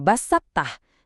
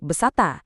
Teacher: Jadi dikata basatah, kamu enggak bacanya jadi besatta. Kamu harus nahan sedikit sifat tebal atau istilah dari huruf th waktu ujung lidah udah bersiap baru dia dilepas jadi huruf ta.